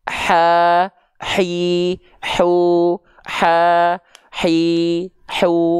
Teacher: H kecil itu dia punya sifat namanya adalah hams tapi dia mengalir nafas